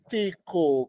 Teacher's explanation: Quem é a mais forte? O li, antepenúltima. A gente chama isso de proparoxítona na língua portuguesa.